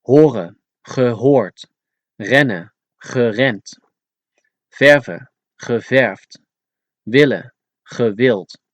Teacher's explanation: the Dutch never pronounce a D at the end as a D, but always as a T